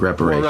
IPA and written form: ˌrep.əˈreɪ.ʃən (Reparation)